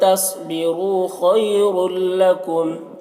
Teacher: तस्बिरू रा को पुर पढ़ेंगे, वाव मद्दा है। खैरुल लकुम यहाँ पर या लीन है, इसे जल्द पढ़ना है।